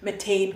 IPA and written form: məˈteɪn (Mattain)